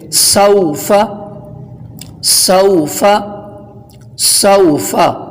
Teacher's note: واو حرف مدہ نہیں بلکہ حرف لین ہے، لہٰذا اس کو بغیر کھینچے، بغیر جھٹکا دیے نرمی سے بولیں گے۔ سوفا، سوفا، سوفا۔